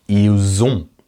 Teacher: Now notice that with il, elle, we've added a little Z sound, didn't we? Ils ont. And that's because on starts with a vowel.